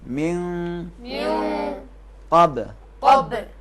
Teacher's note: کیونکہ نون کے بعد قاف ہے تو اسے چھپائیں گے